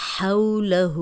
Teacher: ہا پہ الٹا پیش ہے، اس کو ہم دو حرکات لمبا کریں گے